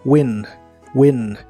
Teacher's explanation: Se pronuncia como se escribe, solo que la I es corta y explosiva.